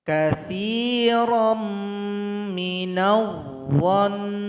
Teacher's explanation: cara berhentinya nun yang bertasydid disukunkan, berikan dengungannya, 2 ketukan.